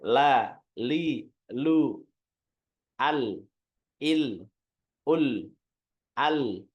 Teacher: aliran suaranya dia akan menyebar ke sisi lidah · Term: huruf lam